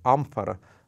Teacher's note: это звук типа который получается если мы прижимаем нижнюю губу к верхним зубам и дальше производим носовой звук